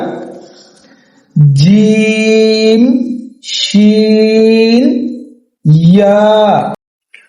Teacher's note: জিহ্বার মধ্যখান তার বরাবর উপরের তালুর সঙ্গে লাগাইয়া জিম শিন ইয়া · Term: 6 নম্বর মাখরাজ